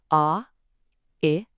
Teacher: What you're really doing is gliding from an ah sound to an I sound. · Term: gliding vowels